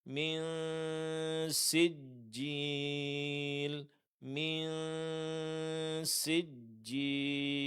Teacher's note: dengung terjadi pada nun sukun ketika bertemu dengan huruf sin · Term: ikhfa hakiki